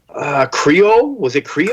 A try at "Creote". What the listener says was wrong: Creote. It's like Creole, but with a T.